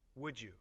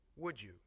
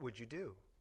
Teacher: The sound duh at the end of would and the sound y at the beginning of you come together to make the sound j. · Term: Blending of D and Y